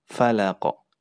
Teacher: huruf qaf itu menjadi sukun ya, karena kita berhenti di ujung ayat huruf qaf tersebut. Makanya sifatnya adalah qalqalah, yaitu terpantul.